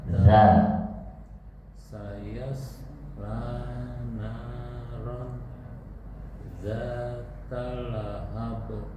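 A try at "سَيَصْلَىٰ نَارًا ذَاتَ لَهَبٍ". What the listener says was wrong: betul, tapi nggak boleh putus. Naron zata lahab. Masih putus. Naron zata lahab.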